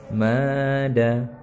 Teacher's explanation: Karena ini ada mad, maka ma ini dibaca panjang 2 harakat. Mada. Nah, yang di sini setelah huruf mad di atas huruf da ini ada tanda tasydid.